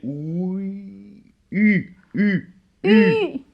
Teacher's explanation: C'est qu'on dit un O, on met la mouche. Non, on fait comme le OU, de dessous, le OU. OU, et on dit I. Et en même temps, voilà, sans bouger la position des lèvres, on essaie de faire un I. Et du coup, ça fait OUI, U, U, U.